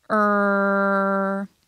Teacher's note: good R sounds are unique because their third peaks are very close to their second peaks